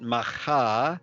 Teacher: we've got the hey on the end. It's just like breathing it out.